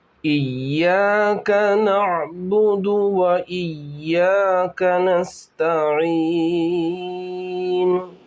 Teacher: یا پر تجدید ہے تو شد کیا جائے گا، یعنی اس کو سختی سے پڑھا جائے گا